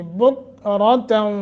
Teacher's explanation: کاف کو ساکن پڑھنا ہے، را موٹا